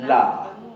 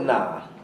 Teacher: dia tempat yang sama hujung lidah jumpa langit-langit atas